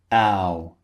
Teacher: Starts wide and finishes rounded.